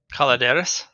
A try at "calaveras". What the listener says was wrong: With a V. Calaveras. Calaveras. Calavera.